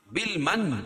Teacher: بالمن نون مشدد غنہ ہوگا